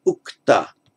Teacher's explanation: the initial v, now being unstressed, just softened itself into an u. So it became ukta, by some prasad, the flipping of the v to the u.